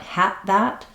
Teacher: you might just drop that D because you're not hearing it when I say had that, and that comes out in your accent like had that.